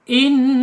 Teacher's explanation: Kemudian secara sifat yang tidak berlawanan gunnah ya, nun. Ketika ada tasjid dia sifatnya gunnah, harus ditahan 2-3 harokat. In gitu ya, gunnah, dengung, didengungkan.